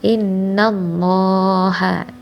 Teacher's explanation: Inna, nun bertasydid artinya gunnah · yaitu dibaca tebal lafaz Allah lam jalalah tafhim